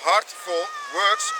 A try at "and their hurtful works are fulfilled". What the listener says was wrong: hurtful works. Hurtful. Is it not hurtful works? Is it hurtful? You said heartful.